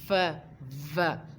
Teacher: A sound that involves using lips and teeth together is described as a labiodental. यानी कि जो sound produced हम कर रहे होते हैं अपने लिप्स और दांतों को इकट्ठे करके जो साउंड डिस्क्राइब कर रहे होते हैं, उस साउंड को लाबायोडेंटल कहते हैं.